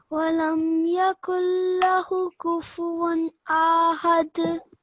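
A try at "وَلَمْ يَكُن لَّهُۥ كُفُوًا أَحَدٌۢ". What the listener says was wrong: Okay, So you have just said it for 1 second again. 2 seconds for the inverted dhamma.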